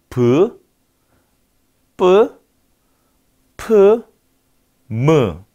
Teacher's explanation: 두 입술이 붙었다가 떨어지는구나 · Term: 양순음